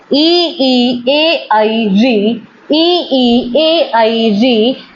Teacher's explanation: इनका उच्चारण स्थान जीभ का अग्रभाग है